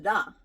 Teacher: when you say ra your tongue is actually nowhere touching almost nowhere in your mouth